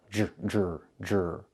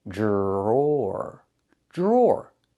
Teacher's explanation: The DR makes a J sound like in juice and jump.